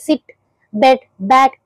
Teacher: front of the tongue hard ప్యాలెట్ కి touch అవుతూ ఉంటుంది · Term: ఫ్రంట్ వోవెల్స్